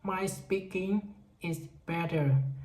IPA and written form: maɪ ˈspikɪŋ ɪz ˈbɛtər. (My speaking is better)